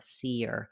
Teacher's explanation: Notice how on this one with did you see her becomes seer. And as we're linking, we have a little bit of a y sound because of the vowel to vowel linking of see to the of her, seer.